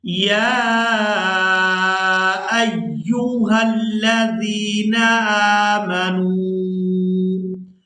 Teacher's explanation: ہم نے حمزہ کو یا مشدد کے ساتھ ملانا ہے تو سختی کے ساتھ ادا کرنا ہے. حمزہ یا زبر ایا پہ یو.